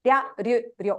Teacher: The trick is the R part is very, very quick. It's just your tongue rolling off the top of your upper palate very quickly.